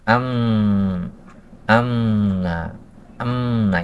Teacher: kedua-duanya Insyaallah benar ya ketika kita mengucapkan am Amna Amna itu memakai gunah memasukkan suara ke Pangkal hidung